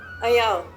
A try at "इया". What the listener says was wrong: आया नहीं, इया,